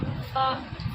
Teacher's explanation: فا کا مخرج ثنایا علیا کا کنارہ اور نیچے کی ہونٹوں کی تری والا حصہ